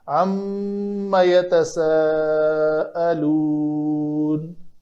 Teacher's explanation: دوسرا جو تشدید آئی ہے اس کے اوپر کہ نون ساکن کے بعد حروف یرملون میں سے تجوید کے قاعدے کے مطابق میم آ گئی ہے، تو ہم اس کو ادغام ناقص کہیں گے، تو یہ لفظ جو ہے لکھنے میں بھی نون حذف ہو جائے گا اور اس نون کا ادغام ما کے اندر ہو کر اس کو ہم پڑھیں گے تشدید کے ساتھ